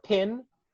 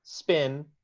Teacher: In pin, the P is aspirated with a small puff of air. In spin, the P is unaspirated.